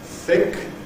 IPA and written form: θɪk (thick)